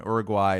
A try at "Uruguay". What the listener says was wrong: I mean, you can say Uruguay, but I think No, it's not Guay. Uruguay.